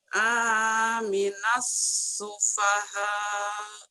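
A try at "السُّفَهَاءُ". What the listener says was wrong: Jangan aminas. Barisnya di mana? Amanas atuh.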